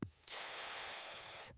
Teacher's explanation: the voiceless sound, which sounds like a snake hissing